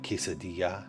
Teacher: the double L sound should be pronounced like a Y, like quesadilla